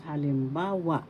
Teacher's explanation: First syllable ha, second syllable lim, third syllable ba, fourth syllable wa. Halimbawa, the third syllable has the accent, so you pronounce this or bigkas, halimbawa.